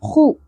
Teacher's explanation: خو کو پر پڑھیں گے اور خراش کا ایلیمنٹ کلیئر ہونا چاہیے. خو لی یا ساکن حرف مدہ ایک الف کے برابر کھینچیں گے.